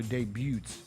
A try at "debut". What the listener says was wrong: Did you just pronounce the T in debut?